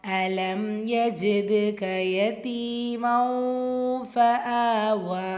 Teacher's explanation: யதி யாமத்தா 2 ஹரக்கத்திலும் நீட்டம் கொடுத்து ஓதணும். மண் தன்வீனுக்கு அப்புறமா ஃபா இஹ்ஃபா உடைய சட்டம் தன்வீனில் இருக்கிற நூனை பாதியாக மறைச்சு குன்னா செஞ்சு ஓதணும்.